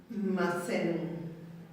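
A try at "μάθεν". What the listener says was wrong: Te falta esta pronunciar. La pronunciaste como si hubiera una sigma ahí. No se escuchó. Se escuchó como sigma. Macen se escuchó.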